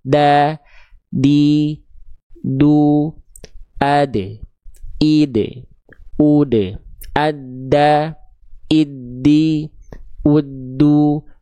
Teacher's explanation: Nah, tuh, ya, ujung lidah kita sentuhkan ke pangkal gigi seri atas. Ya, ujung lidah kita disentuhkan ke gusi tempat tumbuhnya gigi seri atas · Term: huruf dal